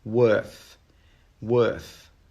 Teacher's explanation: your tongue should go between your teeth at the end of the word